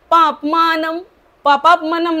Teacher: न ला य जोडलेला आहे तस्मात इंद्रियादौ नियम भरतर्षभ पापमानं पापमानं न च्या वरचा जो अनुस्वार आहे त्याचा म उच्चार करायचा आहे